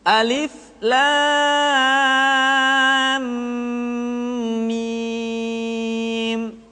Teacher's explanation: lam dibaca panjang lah selama enam harakat